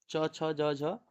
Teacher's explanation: तालु में च आते हैं। च वर्ग तालु से बोला जाता है